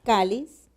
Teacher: esta palabra entonces lleva la mayor fuerza de voz en la penúltima sílaba